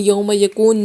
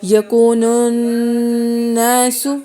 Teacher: نون پہ غنہ ہو رہا ہے، اس کو بھی پراپر ہم جو ہے اسٹاپ کریں گے اور ناک کے اندر آواز لے جائیں گے